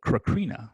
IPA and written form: kɻəˈkɻinə (Corinna)